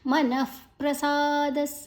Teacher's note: ಮನಃ ನ ಆದ ನಂತರ ವಿಸರ್ಗದ ಉಚ್ಚಾರಣೆ ಫ್, ಮುಂದಿನ ಅಕ್ಷರ ಪ ಇದೆ.